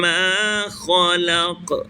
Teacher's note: اب خا اوپر والے حصے سے، حلق کے اوپر والے حصے سے غین اور خا ادا ہوتے ہیں، لہذا خا کو پور پڑھیں گے، موٹا کر کے پڑھیں گے. اور پھر جس حرف پر ہم وقف کر رہے ہیں وہ حروف قلقلہ قاف ہے، لہذا قاف پر جب ہم ٹھہریں گے، وقف کریں گے تو قلقلہ بھی کریں گے.